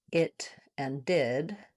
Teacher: the /ɪ/ vowel, the pink pig vowel is also a high front vowel.